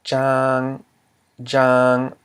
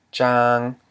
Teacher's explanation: We have the mid-consonant j plus a live syllable, ang, because it ends in a nasal sound. And it equals a low tone.